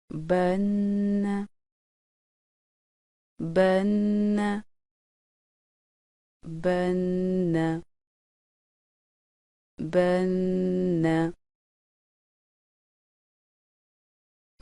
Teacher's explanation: نون شد کے غنہ میں زبان کو نون کے نکلنے کی جگہ پر ہلکے سے دباؤ کے ساتھ لگاتے ہوئے آواز کو ناک کی جڑ سے 1 الف کی مقدار کے برابر جاری رکھ کر ادائیگی کی جاتی ہے